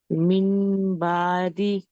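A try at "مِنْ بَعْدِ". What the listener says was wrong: నూన్ కాదు, మీమ్ శబ్దం రావాలి.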